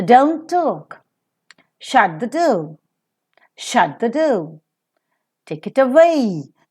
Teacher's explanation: The third place where you could find the falling tone is in all commands that we make during the speech.